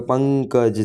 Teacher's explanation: ધારો કે પંકજ છે તો તેમાં મોટેથી બોલાય છે, માટે પહેલું પંક એ ગુરુ અને ક અને જ લઘુ